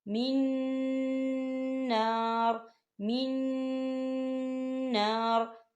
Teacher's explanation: جو بیچ والا نون ہے جو نون ساکن ہے وہ نون اگلے والے نون کے اندر مدغم ہو جائے گا